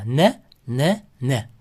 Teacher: N deganingizda mana tilimiz tishimizga tegadi.